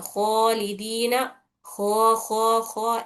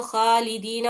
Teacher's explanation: मोटा पड़ने के लिए जुबान की जो जड़ रहती है उसको तालू की तरफ उठाना रहता।